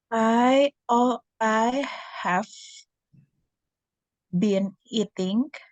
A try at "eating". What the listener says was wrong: Eating-nya pakai G ya, bukan pakai K. Eating. kamu suaranya masih kayak ada K-nya gitu ya. Eating gitu. Eating.